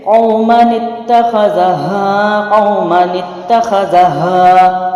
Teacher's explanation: حروف مد نہیں پڑھا جائے گا، الف ختم کر کے اس کو پڑی حرکت کے طور پہ پڑھیں گے